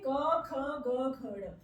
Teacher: जैसे हम क बोल रहे हैं तो हमारे कंठ से आवाज आ रही है · जो क वर्ग वाले होंगे उनका उच्चारण स्थान होगा कंठ, यानी कि जहां से हमारे मुंह के किसी भी भाग से आवाज आ रही है, यानी कि जैसे हम क बोल रहे हैं हमारे कंठ से आवाज आ रही है, तो यहाँ पे इसका उच्चारण स्थान क्या हो जाएगा, कंठ।